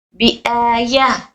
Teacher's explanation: आ में हमजा पर खड़ी जबर आई है तो उसको खींच कर पढ़ेंगे